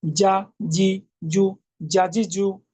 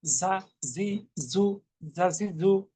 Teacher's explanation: জিম জিব্বার মাঝখান তালুর সঙ্গে লাগিয়ে, যা জিব্বার আগা সামনের নিচের দাঁতের একটু আগার সঙ্গে লাগিয়ে। জিম পাতলা মজবুত, আর যা পাতলা, আর সেটা হবে মৌমাছির আওয়াজ।